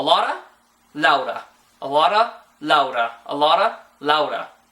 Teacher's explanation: the non-trilled Spanish R shows up all of the time in English